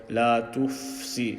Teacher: So the fa sakin sound, make it continue until you're ready to say si.